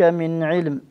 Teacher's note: هذه النون هنا مظهرة، لأنه العين من حروف الإظهار